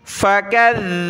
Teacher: ज़ाल पर ज़बान भी निकालनी है और इसको सख्ती के साथ पढ़ना है। काफ को ज़ाल के साथ मिलाया।